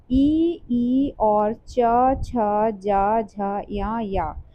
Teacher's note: तो इसको तालु से जो है इसका उच्चारण स्थान होता है